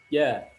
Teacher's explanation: game diucapkan dengan menyentuhkan Tengah lidah kita pada langit-langit bagian keras jadi pengucapan huruf Jim Tengah lidah kita menempel rapat ke langit-langit kita